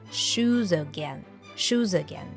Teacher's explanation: the words shoes and again are linked together with a schw sound from again again shoes again shoes again